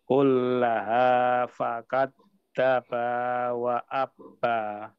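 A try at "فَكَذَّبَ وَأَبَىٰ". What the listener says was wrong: Hati-hati Pak Kadzaba, Pak ya. Ini banyak pendek, lalu aba yang ini tidak wa abba, tapi wa aba. Fakadzaba wa aba.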